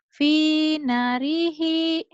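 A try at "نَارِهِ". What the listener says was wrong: Nanya panjang. Finarihi.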